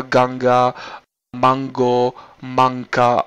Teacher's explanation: to N ve slově Kongo to je hláska zadopatrová ona vlastně vzniká vzadu na zadním patře